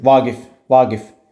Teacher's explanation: Vaqif sözündə ümumiyyətlə adam adlarında vurğu normalda sonuncu hecanın üzərinə düşür.